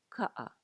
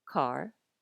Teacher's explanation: In Hawaiian, there's going to be less air. Ka'a, which is the Hawaiian word for car. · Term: less aspirated